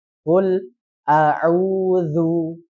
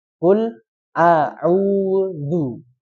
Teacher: maka bibirnya itu harus disempurnakan. Jadi menyempurnakan dhammah yang pertama, baru dhammah yang kedua. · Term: dua dhammah